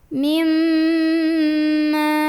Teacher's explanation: mimnya ini didengungkan dulu, ditahan kurang lebih 2 harokat dengungannya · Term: gunnah musyaddadah